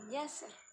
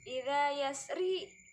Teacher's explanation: Kalau dibacanya idza yasri baru kasroh, tapi ini kan ada tanda ayat idza yasr, jadinya ro tafkhim karena disukunkan